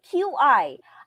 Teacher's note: Our Q also has the TS sound, but this time we put air when we pronounce that.